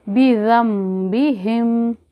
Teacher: इक़लाब के माने बदलने के हैं, तो नून साकिन के बाद अगर बा आ जाए, नून साकिन के बाद अगर बा आ जाए तो यहाँ पर हम बदल देंगे, और फिर इसको नून की जगह पर मीम पढ़ेंगे और गुन्ना के साथ पढ़ेंगे।